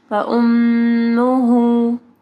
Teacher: میم کے اوپر دیکھیں شد ہے ٹھیک ہے، تو یہاں پہ غنہ ہوگا